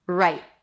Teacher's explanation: It's an R sound. You don't really hear the W when it's before an R.